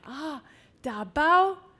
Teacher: uttered with a very emphatic high tone on the bow